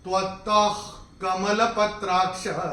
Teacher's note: तीसरे चरण में अगर आपने ध्यान दिया हो मैं कैसे चैंट किया था, त्वत्तः कमलपत्राक्ष, तो ये जो विसर्ग आ रहा है त के बाद, उसके बाद का अक्षर है क, और विसर्ग के बाद जब क या ख आता है तो विसर्ग का उच्चारण होता है ह फ्रॉम द एपिग्लॉटिस